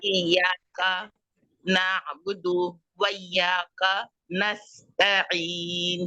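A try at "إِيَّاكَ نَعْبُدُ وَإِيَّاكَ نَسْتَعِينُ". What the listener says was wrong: आपके दाल को आपने लंबा नहीं करना।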